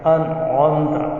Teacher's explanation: جیسے مثال کے طور پر انعمت، تو ان یہ نون ساکن ہے، اس کے بعد عین آ گیا، حروف حلقی میں سے حروف حلقی 6 حمزہ ہا عین ہا غین خا، ان 6 حرفوں میں سے کوئی بھی حرف آ جائے گا تو ناک میں آواز نہیں رکھیں گے بلکہ نون ساکن کا اظہار کریں گے